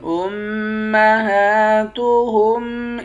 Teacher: ہا کے اوپر کھڑا زبر ہے، کھڑے زبر کو ایک الف کی مقدار کھینچ کر پڑھتے ہیں۔ لام کو اس والے لام کے ساتھ ملا کر پڑھیں گے، اس لام کے اوپر کھڑا زبر ہے، اس کو ایک الف کی مقدار کھینچیں گے، اس کے اوپر مد بھی ہے، اس مد کو 5 الف کی مقدار کھینچ کر پڑھتے ہیں۔